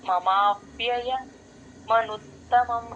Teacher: మమా మకి వానికి జాయిన్ చేయాలి ఇక్కడ కూడా అంతే వాకి పొల్లే పెడతాం ఔకారం అస్సలు రాకూడదు